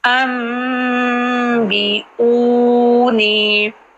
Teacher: ان بی تھا لیکن با کی وجہ سے جو نون ہے وہ میم بن گیا، تو ان کی بجائے بی انبئونی. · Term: اقلاب